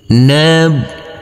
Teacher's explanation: Huruf ba cukup kita tekan dan kita tahan saja dengan 2 harokat.